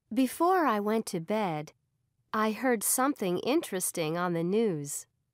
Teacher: notice how each Clause ends with falling intonation